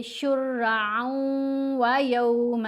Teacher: آئین کے اوپر 2 زبر ہیں، آگے واو مشدد ہے، ہم نے آئین کو واو سے ملا کر پڑھنا ہے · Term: یرملون کا ادغام